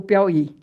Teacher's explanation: Porque Piauí é uma oxítona. A sílaba tônica é a última. Por isso que ele recebeu o acento.